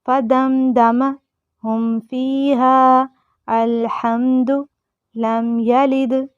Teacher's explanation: ہم سادہ پڑھیں گے، میم کے آواز کو ظاہر کر کے پڑھیں گے، ناک میں نہیں چھپانا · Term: اظہار شفوی